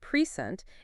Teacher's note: If we stress the first syllable, present, it's a noun meaning a gift. But if we stress the second syllable, present, it's a verb meaning to give something.